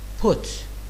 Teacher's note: So if you pronounce the word put, and if you put your hand in front of your mouth and you say put, you can feel the explosion coming out of your mouth, and this is called aspirated P sound